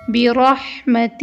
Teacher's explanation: یختص، یہاں پر خا موٹے حروف میں سے ہے، صاد کو ہم منہ گول کر کے ادا کریں گے۔ برحمتہ، یہاں پر را کے اوپر زبر آیا ہے تو را کو ہم موٹا پڑھیں گے · یہاں پر دو ہا ہے، پہلا ہا حلق سے ادا ہوگا اور دوسرا ہا سینے سے ادا ہوگا